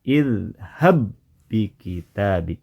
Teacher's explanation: ada dua huruf ba namun terdengar menjadi satu huruf ba saja yang bertasdid idhab bikitabi ya yang terdengar satu pengucapan huruf ba bertasdid saja · Jadi huruf ba yang pertama tak nampak lagi suara pantulannya karena sudah digabungkan, sudah melebur ke huruf ba yang ada di depannya. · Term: Idgham mutamailin, idgham mutamathilain